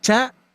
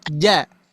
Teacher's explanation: Tapi kalau ja jahar Pak Bu. Ya, tidak ada sedikit pun yang menembak udara ke telapak tangan kita